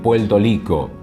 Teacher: otro de los casos donde hay variaciones de fonemas es en la r en algunos países lo realizan como l